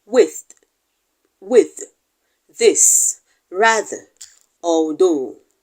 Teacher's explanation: we will be discussing the voiced dental fricative